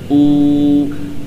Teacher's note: tidak ada i'timad, tidak bersandar suaranya pada bagian bibir